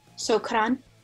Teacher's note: It's more like a rolled R a little.